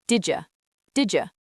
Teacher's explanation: Let us practice the pronunciation of this, because native speakers do not pronounce every single letter clearly. Listen to how the words did and you push together.